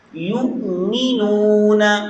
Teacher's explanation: حمزہ پر قلقلہ نہیں ہونا چاہیے